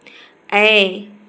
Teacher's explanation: कंठ तालव्य, दीर्घ अग्र विवृत अवृतमुखी